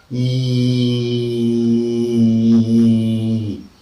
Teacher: the tongue is fronted maximum and very close to the roof of the mouth, and we utter the sound like E. · maximum fronting, maximum closeness, unrounding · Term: cardinal vowel number 1